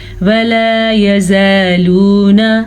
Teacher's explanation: ولا الف مدہ، یزالون یہ بھی الف مدہ اور یہ واو مدہ، دونوں کو کھینچ کے پڑھیں گے بلکہ تینوں کو.